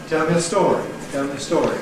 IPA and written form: ˈtel mjə ˈstɔːri (Tell me a story)